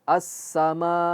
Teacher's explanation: Tapi fokus di pada maa nya saja. Ketika panjang maa itu enggak hidung lagi.